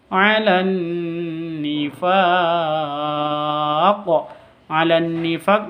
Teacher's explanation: Nun tasdidnya dengung tiga ketuk dengan hurufnya